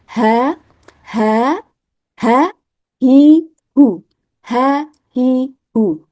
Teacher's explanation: alistiffal atau hurufnya terbaca tipis karena pangkal lidah yang tidak naik